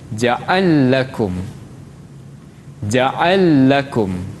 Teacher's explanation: untuk As-Susi dibaca dengan al-idgham, masukkan kepada lam yang kedua. Jadi ja'ala lakum dibaca Susi sebagai ja'al lakum.